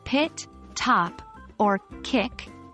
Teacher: specifically p t and K are often aspirated this means that a puff of air is released when pronouncing them at the beginning of a word or syllable